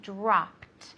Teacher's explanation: drop in the past has a hard T sound